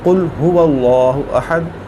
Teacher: जो काफ़ नुक्तों वाला है इसको मोटा करके पढ़ा जाता है